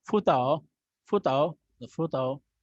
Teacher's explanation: Okay, just like fu has the third tone, tao has also third tone. So the fu would be pronounced with the second tone and tao in the third tone.